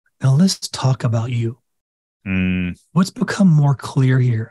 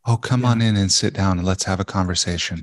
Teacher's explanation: I change even the tone of my voice I start to get breathy